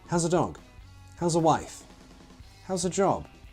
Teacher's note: the TH sound is dropped completely, resulting in a weak schwa sound.